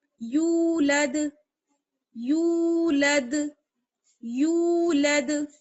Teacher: دال پر جو ہے جزم آ رہا ہے اس لیے دال پر قلقلہ ہوگا